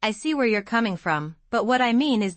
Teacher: Notice how your voice goes up on coming from and then down on mean? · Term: natural intonation